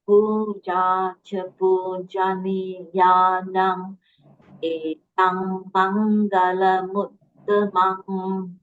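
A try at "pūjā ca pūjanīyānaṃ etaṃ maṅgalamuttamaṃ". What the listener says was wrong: Very good. Actually, you have improved a lot, sister. You have improved tremendously.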